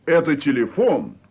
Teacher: of intonation yes at a telephone means that's the telephone but at a telephone with a rising note at the end means is it the telephone